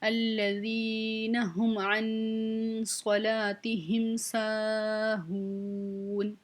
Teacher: سا الف مدہ آ گئی ہے، کھینچ کے پڑھیں گے، ہو واو مدہ آ گئی ہے، اس کو بھی ہم کھینچ کے پڑھیں گے اور نون کے اوپر وقف کر دیں گے، ٹھیک ہے؟